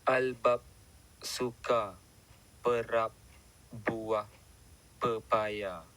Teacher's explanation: kewujudan bunyi plosif bersuara bilabial B di tengah dan akhir perkataan albab. TBN yang berada di tengah perkataan menunjukkan isyarat akustik ledakan mula bagi bunyi plosif.